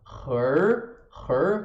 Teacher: começa na garganta e passa para a língua enrolada